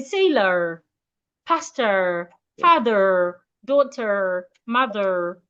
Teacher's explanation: You can decide to add the R sound if you want to sound American